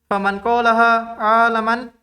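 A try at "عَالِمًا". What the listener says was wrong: Salah harokat. Aliman.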